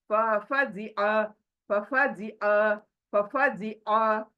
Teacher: हलक के बाहर उंगली लगा दो शहादत की, यानी हमें पता चलना चाहिए कि आइन जो है हलक के बीच से निकल रहा है। तो बिगिनिंग में हमारी प्रैक्टिस, जब कभी आइन पढ़ते हैं, हमारी उंगली बाहर से हलक को लगनी चाहिए, दबाना चाहिए, तब जाकर आइन बाहर आएगा।